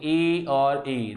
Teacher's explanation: आपकी जीभ हल्का सा स्पर्श, हल्की सी स्पर्श करेगी किसको? तालु को।